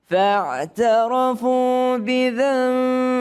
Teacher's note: Nun ketemu dengan ba, maka dia iqlab. Berubah bunyinya, bukan nun tapi seakan-akan mim. Bidzanbihim, tapi enggak terlalu rapat juga mulutnya.